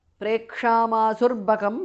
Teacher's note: Prekshamasuhu visarga changes to repha